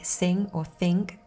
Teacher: For example, in words like sing or think, the I sound before the nasal consonant takes on a nasal quality and may sound slightly different compared to when it appears in other word positions.